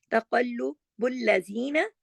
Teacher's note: زی کو 2 حرکات کھینچیں گے